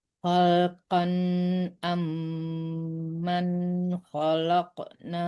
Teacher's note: Khalqan amman sama dengan man juga enggak boleh di ada dengungannya enggak ada dibawa ke hidung. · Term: izhar